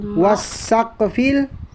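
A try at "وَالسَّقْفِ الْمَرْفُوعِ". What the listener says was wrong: hindi, ito ay qaf. Wasaqfil marfu.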